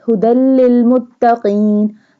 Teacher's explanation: Ha pronounced from the bottom part of throat.